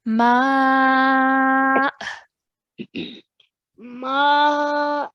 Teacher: stretching the ma sound um and then we are going to make a soft jerk sound for the Hamza sakin at the end